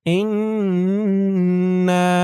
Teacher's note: এখানে ওয়াজিব গুন্নাহ হরকতের পরে নুনের উপর তাসদীদ